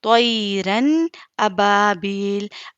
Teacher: حمزہ آیا ہے۔ تو یہاں پر نون کو ظاہر کر کے بلا غنہ کے ساتھ پڑھیں گے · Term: اظہار